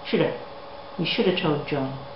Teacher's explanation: In the word have, the h and the v have disappeared completely, and the a has changed to an e, which is joined on to should